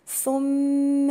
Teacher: الثاء مضمومة وهي من الحروف اللثوية اللي بخرج فيها طرف اللسان، والميم المشددة تبقى برضو غنة بمقدار حركتين.